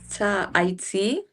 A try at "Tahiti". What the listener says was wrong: Why did you say I? But the H is silent in French. So we're going to say, for this one, we're going to say ta, I, T.